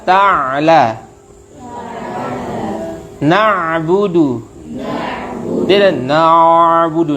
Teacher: Kalau ain na'budu dia ngalir sebentar tapi tertahan lagi.